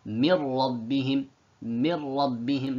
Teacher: Look, the noon has been completely removed. There is no, it's been completely merged with the ra. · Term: complete idgham